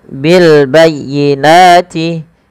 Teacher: bil tampakkan dengan jelas alif lamnya atau suara lamnya di sini karena dia ada bacaan alif lam qamariah. Alif lam qamariah yaitu alif dan lam yang kita tuliskan dan dibaca dengan jelas suara lam ya.